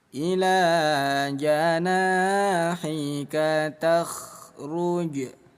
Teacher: Huruf kha memiliki sifat rokhwah, artinya mengalir ya. Jadi jangan sampai dipantulkan nggak ada pantulan dalam huruf kha ya.